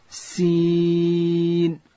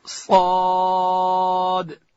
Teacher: د صاد اواز چې دی هغه ډک دی، داسې به نه وای لکه سین. د سین اواز باریک دی، د صاد اواز ډک دی.